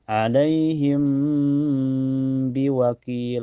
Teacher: mim sukunnya ditahan ya sampai terasa ke hidung. Jangan terburu-buru. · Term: ikhfa syafawi